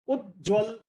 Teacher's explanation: आधा त जो है वो फिर उसके बाद ज में बदल जाता है